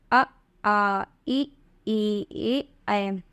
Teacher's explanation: इसमें ओठों के आकार गोलाकार नहीं बनते हैं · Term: अव्रतमुखी